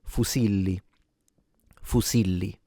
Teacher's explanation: a lot of Italians, particularly in the center all the way down into the south, will pronounce it with a s sound